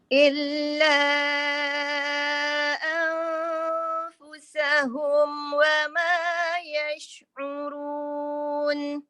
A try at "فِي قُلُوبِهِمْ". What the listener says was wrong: Cuma hati-hati pada ha ya. Perhati pada ha. Ada hentakan kat situ. Okey, kita kurangkan saja.